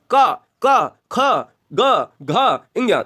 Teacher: ये गले से आ रहे हैं इसलिए इनका नाम कंठ पड़ा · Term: कंठी स्पर्श व्यंजन